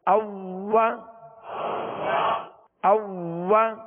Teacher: واؤ کو دونوں ہونٹوں کی گولائی سے ادا کریں گے